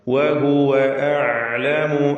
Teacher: വാവുകൾ വ്യക്തമായി ചുണ്ടിൽ നിന്ന് തന്നെ ഉച്ചരിക്കുക. 2 ചുണ്ടുകൾ ചേർത്ത് വാവ്.